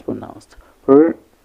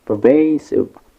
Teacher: Pervasive has 3 syllables and it is pronounced per, with a schwa between p and r. So we have vey with a like in cake, and we have sieve with a like in ship.